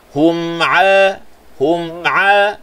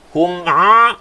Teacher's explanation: Ain bila kita sebut tak masuk hidung.